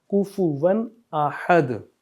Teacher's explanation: یہاں پہ اظہار کا، یعنی کہ حروف اظہار میں سے اگر کوئی حرف آ جائے، الف، ہا، غین یا عین، تو یہاں پہ ہم غنہ نہیں کریں گے، اپنی آواز کو ناک پہ لے کے نہیں جائیں گے، بلکہ ہم ایک فلو میں پڑھیں گے، کفوا احد۔ اگر یہاں پہ حروف اظہار کے علاوہ کوئی اور حرف ہوتا جیسے دال ہوتا تو ہم پھر ناک میں آواز لے کے جاتے جیسے کفوا، لیکن یہاں پہ الف ہے تو ہم غنہ نہیں کریں گے۔